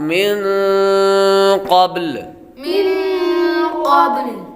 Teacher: نون ساکن کے بعد قاف حروف اخفا میں سے آ رہا ہے، غنہ ہوگا